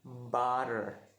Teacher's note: the second is flap T, that we flip, we switch the pronounced T into D, but D is the simple, not a simple way.